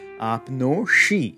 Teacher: our internal S sandhi rule is triggered because of the vowel O, which forces the S to become a retroflex